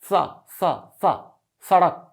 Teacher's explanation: इसका उच्चारण तब होता है जब आपकी जीभ दांतों में लड़ती है